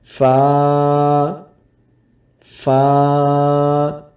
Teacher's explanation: فا کو پڑھتے ہوئے اوپر والے دانت نیچے والے ہونٹ کے اوپر لگیں گے تو فا ادا ہوگا۔